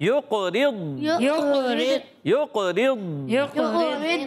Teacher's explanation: قاف میں کلکلا کریں گے، ضاد میں کلکلا نہیں کریں گے. آواز اس کی جاری رہتی ہے تھوڑی دیر تک